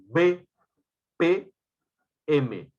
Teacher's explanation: consonantes bilabiales porque se produce articulando juntando los dos labios p p m por eso se llaman bilabiales cuál es la